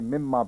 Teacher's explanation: میم میں نون کلیتاً مدغم ہو گیا